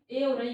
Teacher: ए और ऐ का उच्चारण स्थान कंठ और तालु दोनों है। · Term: कंठ तालु